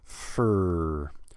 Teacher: this word F-O-R, most of the time we just say fur. No vowel, just the F and then the R. Fur. Now there are students who are capable of making a beautiful R, but they make a weak R.